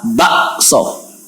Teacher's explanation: ibdal atau iqlab mengubah Kaf menjadi Hamzah